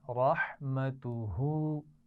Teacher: ورحمتہ را کو موٹا پڑھیں گے